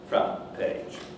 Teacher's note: you have n t there in the ideal form and that's then affected by the bilabial and it becomes front page